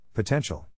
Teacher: In this case, the accent is in the second syllable